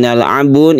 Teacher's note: ini adalah mad arid lisukun yang panjangnya bisa mencapai 3 alif. Boleh 1, boleh 2, boleh 3 alif.